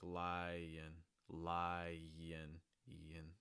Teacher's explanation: You have the lie and then you have the N. So we're going to join those together with a slight Y sound